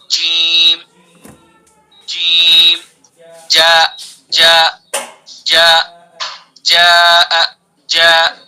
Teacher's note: بالکل اس کے اوپر لگائیں گے، اس کے اوپر تالو پر لگائیں گے. جیم جیم زبان کے بیچ کو سیدھا اس کے اوپر تالو ہے نا، تالو وہاں ٹچ کریں گے، وہاں سے ٹچ کر کے جیم کو ادا کریں گے · جیم زبان کا بیچ اور اس کے مقابل اوپر کا تالو